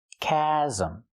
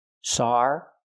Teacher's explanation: We need the short ass sound like black cat for the second syllable.